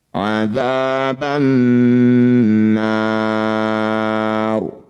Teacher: Ro sukun jika didahului fathah maka harus dibaca tafkhim atau tebal. Angkat ujung lidah sampai menempel di langit-langit lisan.